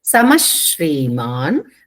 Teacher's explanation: శ్రీ ఎప్పుడు వచ్చినా అది కూడా సంయుక్తాక్షరం పైన ష ని కొంచెం ఒత్తి పలకాలి